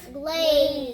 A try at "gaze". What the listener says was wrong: there's no L. Gaze. Gaze. What vowel says its own name? A.